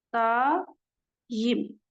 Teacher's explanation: Daim formasında tələffüz olunur. Deməli, birinci hecamız uzanır, vurğu amma düşür sonuncu hecanın üzərinə